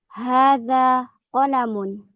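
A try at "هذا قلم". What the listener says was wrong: Mumtaz.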